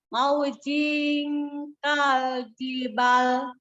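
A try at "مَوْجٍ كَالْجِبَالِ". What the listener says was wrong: Maujing kaljibal. Kan enak berhentinya kalau panjang ya. Kalau jibal kan nggak enak. Iya, ada matnya.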